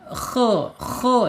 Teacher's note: makhrajnya ada di tenggorokan atas ya. Ya harus ada agak ngorok dikit enggak apa-apa ya.